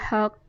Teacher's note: कलकला होगा कौफ पर वक्फ़ की हालत में।